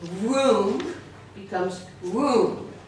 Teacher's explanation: Also at the end, the M often becomes an N. Somehow it's hard for the Spanish speakers to put the lips together.